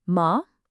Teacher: The second tone rises almost like you're asking a question.